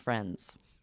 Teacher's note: it just sort of becomes an NZ sound.